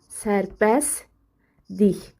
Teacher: T düşür. L da D-ya çevrilir.